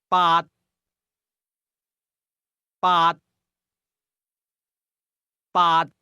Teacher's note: It was a midlevel tone.